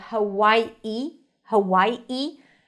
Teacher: you can even add a glottal stop like Hawaii. Hawaii.